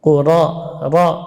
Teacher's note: Quraisy, ya, ra-nya jelas, tidak boleh cenderung ke ya.